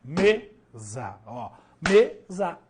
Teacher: a primeira sílaba é mais forte ou seja a penúltima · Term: sílaba tônica